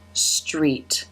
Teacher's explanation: the r consonant sound opening into the e as in she vowel sound